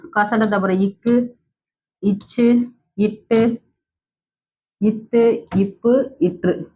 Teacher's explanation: வல்லின எழுத்து ஆறும் வந்து மார்ப இடமாக கொண்டு பிறக்கின்றது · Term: வல்லின மெய்ெழுத்து